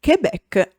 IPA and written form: keˈbɛk (Quebec)